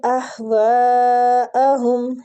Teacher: یہ مد واجب متصل ہو رہی ہے، اس کی کھینچنے کی مقدار 4 حرکات ہے